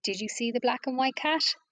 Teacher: did you see the black and white cat your voice might your intonation would rise at the end of the sentence